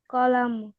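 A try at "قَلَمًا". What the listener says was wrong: কলামু কেন, স্পষ্ট করে বলো। কলামাটা না, দুই জবর, দুই জবর হলে কি হবে, কলামান।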